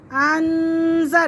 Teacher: یہاں پہ غنہ کریں گے کیونکہ زال آ رہا ہے